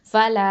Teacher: லாம் ஃபத்ஹா, அலிஃப் மத்து, ல 2 ஹர்க்கத்தை நீட்டணும்